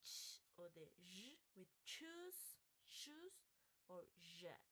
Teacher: these sounds start like a plosive and finish like a fricative. These have three stages: closure, stop, and friction. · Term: affricate sounds